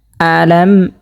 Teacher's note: এখানে মিম সাকিন যে আসছে এখানে কিন্তু কোনো গুণা হবে না, গুণা ছাড়া পড়তে হবে।